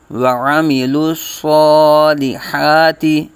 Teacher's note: الصا لام باریک اور صاد کو پر پر آ جائے گا، صاد کھڑا زبر قائم مقام الف مدہ ایک الف تک کھینچ کے پڑھیں گے